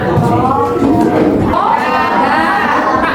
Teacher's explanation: Ujung lidah bertemu gusi atas